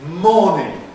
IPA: ˈmɔːnɪŋ